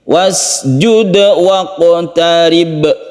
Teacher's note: Ada qalqalah 2 di sini. Qaf dan ba